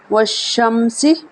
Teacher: واو زبر شین وش، شین زبر میم شم، سین زیر واو زبر شین وش، شین زبر میم شم، سین زیر سی، والشمسی۔ یہاں پہ سین میں سٹی کی آواز آئے گی، سٹی کی آواز آئے والشمس میں، واو زبر شین وش، شین زبر میم شم، سین زیر سی، والشمسی۔